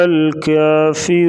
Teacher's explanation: واو ساکن سے پہلے پیش ہوگی تو را واو مدہ ہوگی، تو واو مدہ کا مطلب ہے اس کو لمبا کریں گے